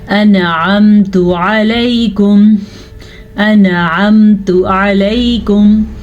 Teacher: عین کے مخرج کو واضح کریں، نہیں تو یہ حمزہ بن جائے گا اور لفظ غلط ہو جائے گا.